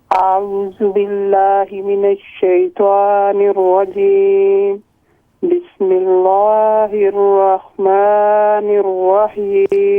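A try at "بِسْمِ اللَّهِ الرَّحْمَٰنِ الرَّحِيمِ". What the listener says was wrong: یہ لام کو باریک کر کے پڑھیں. بسم اللہ الرحمن الرحیم.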